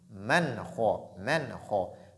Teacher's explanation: kha fait partie des lettres de al-idhar. Donc la clarification